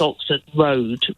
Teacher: road has got what's called a glottal stop at the end of it in the D